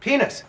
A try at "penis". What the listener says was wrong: Not singing. Not like a ghoul.